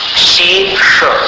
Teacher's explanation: शे का उच्चारण तालु से और श का उच्चारण मूर्धा से